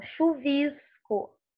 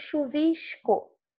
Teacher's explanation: Nossa pronúncia, né, da carioquês, digamos assim, fluminense, a gente fala o S, nesse caso aqui, até chiando. Paulistas, por exemplo, falam o S mais menor, né? Sem esse chiado. Eles falam chuvisco e nós falamos chuvisco.